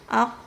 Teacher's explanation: Makhrajnya dari pangkal lidah bertemu dengan langit-langit yang lunak. Perhatikan yang digaris bawahi adalah langit-langit yang lunak. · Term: makhraj huruf qof